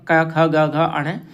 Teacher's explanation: कंठ से भी बोला जाएगा क वर्ग का अक्षर और पांचवा अक्षर नासिका से भी बोला जाएगा तो इसको नासिक्य वर्ण भी कहा जाता है।